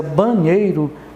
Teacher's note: E aí você já de cara percebe que ela é paroxítona, porque a sílaba tônica, apesar de não acentuada, a sílaba mais forte pronunciada é o nei, ok? Então, começando aqui com as regras da acentuação das palavras paroxítonas de acordo com as terminações.